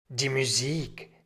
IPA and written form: diː muˈziːk (die Musik)